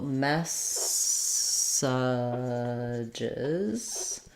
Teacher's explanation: in the second and third syllables these vowels are going to be reduced vowels